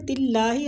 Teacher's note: تلّہ اللہ کی لام کو ادھر باریک پڑھیں گے کیونکہ پیچھے تا جو ہے نا اس پہ زیر ہے، تو زیر کی وجہ سے ہم اللہ کی لام کو باریک پڑھیں گے